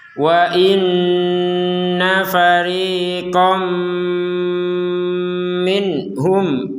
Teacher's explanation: Kalau sekedar masuk tanpa dengung, fariqom minhum fariqom min, itu kan nggak ada dengungan, itu kurang. Jadi pertama dimasukkan, kedua didengungkan.